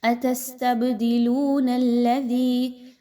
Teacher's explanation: دال کو نرمی کے ساتھ پڑھیں، سیٹی کی آواز کے ساتھ نہیں پڑھنا، سافٹلی پڑھنا ہے۔